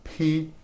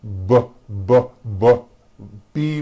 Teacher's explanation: the only difference is my vocal cords are either vibrating or they're not vibrating · They are produced exactly the same way here in your mouth, but the P sound has no voicing and the B sound, b, does have voicing